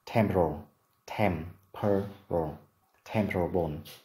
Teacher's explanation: Từ này trọng âm rơi vào âm tiết thứ nhất